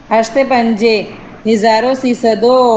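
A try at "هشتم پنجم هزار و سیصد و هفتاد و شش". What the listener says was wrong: گنتی میں واو نہیں ہے ڈبل ہوتی تو آتا. مثلا یہ بستو ہشتم بستو واو آتی لیکن یہ ہشتے بستو ہشتے نہ ہشتے پنجے بخانی ہشتے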